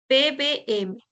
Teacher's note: Cuando tú haces el sonido de P, de B o de M, siempre interactúan el labio inferior con el labio superior. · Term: sonidos bilabiales